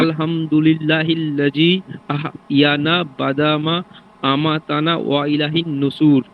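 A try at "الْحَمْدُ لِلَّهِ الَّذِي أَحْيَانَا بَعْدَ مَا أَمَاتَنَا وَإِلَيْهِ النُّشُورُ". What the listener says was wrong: শুনেন, আলহামদু এখানে হা আছে। হা, হ্যাঁ আলহা। হ্যাঁ, এইটা হ্যাঁ এইখানে এটা করতে হবে।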